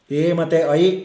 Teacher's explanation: ಮತ್ತೆ ಐ ಕಂಠ ತಾಲು ಅಂದ್ರೆ ತ್ರೋಟ್ ಅಂಡ್ ಪ್ಯಾಲೆಟ್ ಅಂತ ಕರೀತೀವಿ ಅಂದ್ರೆ ಕಂಠ ತಾಲು ತ್ರೋಟ್ ಮತ್ತು ಪ್ಯಾಲೆಟ್ ಗಳಿಂದ ಅದನ್ನ ಪ್ರೊನೌನ್ಸ್ ಮಾಡ್ತೀವಿ